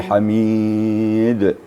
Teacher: Hanya dipanjangkan, kemudian timbul qalqalah yang kubra di akhir.